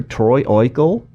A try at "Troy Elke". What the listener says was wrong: Oh, Troy Elke. The O silent.